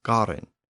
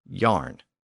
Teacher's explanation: the Germanic languages have retained a hard G sound, where English and Frisian have developed a Y sound